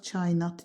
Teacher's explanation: Kainat sözü tələffüzdə qoşa saitlər arasına bir Y əlavə olunacaq.